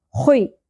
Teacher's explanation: خو کو پر کریں گے، کھردرا پن ہوگا، خراش کا ایلیمنٹ اس میں پرومیننٹ ہوگا